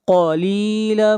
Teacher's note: قاف کو موٹا پڑھیں گے، قاف حروف مستعلیہ میں سے ہے